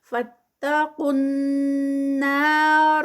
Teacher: فاتقوا النار، فتا اور قاف جو ہے وہ ڈائریکٹ نون میں مرج ہوگا، نون جو ہے آگے مشدد ہے تو یہاں پر قاف ہیوی پہلے اور پھر نون جب مشدد ہے تو غنہ کا رول اپلائی ہوگا، یعنی اس پر تھوڑا سا ہم ٹھہریں گے، 2 کاؤنٹس کا اسٹریچ ہوتا ہے غنہ پہ